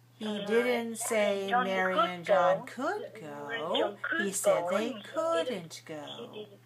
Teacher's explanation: So we're stressing could and couldn't, right? So go up on those words. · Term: stress and intonation